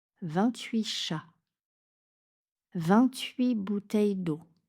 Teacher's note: avec un mot qui commence par une consonne, le T est muet.